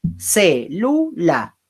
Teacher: la que suena más fuerte es la E de célula